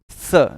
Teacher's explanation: Normally स बोलते समय जीभ दांतों से टकराती है, इसीलिए इसको बोला जाता है दंत।